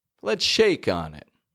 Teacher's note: All the other words are lower to medium kind of pitch, but we hear a rise in shake.